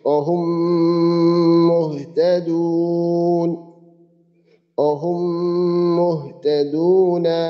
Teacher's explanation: মিম সাকিনের পরে মিম আসলে দ্বিতীয় মিমে তাসদিদ দিয়ে উক্ত মিম সাকিনকে গুণনা সহ পড়তে হয়